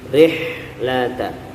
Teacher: kita resapi bahwa ha ini di tengah tenggorokan, kemudian bunyinya desis lembut